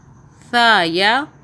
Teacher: یہ جو سا ہے اس کو ہم نے سافٹ ادا کرنا ہے، زبان کو آپ ہلکا سا باہر کریں گے تو آپ سے آسانی کے ساتھ یہ ہو جائے گا۔